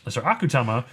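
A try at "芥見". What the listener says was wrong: Akutami. Yeah, there's an I there, don't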